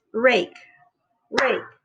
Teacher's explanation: you don't feel any vibration so it's unvoiced